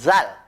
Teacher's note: kalau Zal dengan cara pengucapan atau pelafalan nya digigit ujung lidahnya